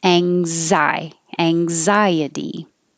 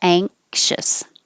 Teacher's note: It's the NG combination made in the back. So ang, like you're going to say angle, but don't release the G